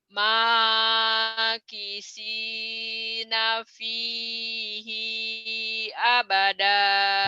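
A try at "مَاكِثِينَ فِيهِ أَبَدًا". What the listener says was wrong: Ini pendek. Makisina fihi abada. Ya.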